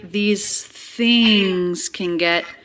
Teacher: The word these, unstressed, said more quickly.